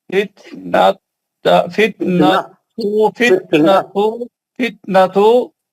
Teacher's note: فتنہ نہیں ہے تا مربوطہ ہے تو آپ کو ہا کی آواز نکالنی ہے